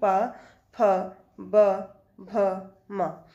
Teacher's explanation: जिन व्यंजनों के उच्चारण में दोनों ओठों द्वारा श्वास का अवरोध होता है उन्हें ओष्ठ व्यंजन कहते हैं, जैसे प, फ, ब, भ, म।